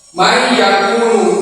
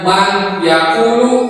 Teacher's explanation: menjadi satu huruf yang ditasjid, yang lidah terangkat dengan satu kali angkatan. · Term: idgham